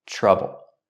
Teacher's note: Linked to the TR sound, we use the ch sound like chicken plus the R. Trouble. Remember, the vowel in trouble is a short sound, like up and cup.